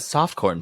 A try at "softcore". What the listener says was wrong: You said soft corn again. Not that soft corn pour shit. Not my pores. They're so soft and corn.